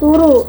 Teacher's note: ada proses penyederhanaan karena bunyi D di tengah hilang dan vokalnya diseragamkan jadi U